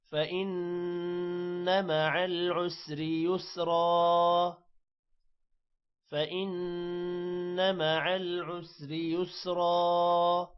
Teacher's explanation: فإن، نون پر غنہ ہوگا، مع العسر، را موٹا نہیں کریں گے عسری کا۔